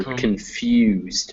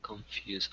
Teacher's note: it goes straight from the K to the N, and then the emphasis is on few